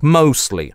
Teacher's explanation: такое распространенное слово как mostly очень часто звучит как mossly - вообще без /t/.